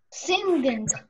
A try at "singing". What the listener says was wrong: Посмотрите, в слове sing мы последнюю вот эту г не произносим практически, ребята. Сделайте sing. Такой носовой звук. Sing.